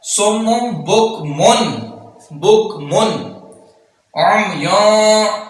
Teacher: ये नून तनवीन है, इस पर इजहार हो रहा है क्योंकि नून तनवीन के बाद हरूफ हल्की में से आइन आ रहा है